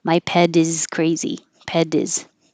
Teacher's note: If it's before a vowel, now the T changes to a D.